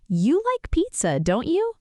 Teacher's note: Rising intonation, the speaker is genuinely asking, not certain at all.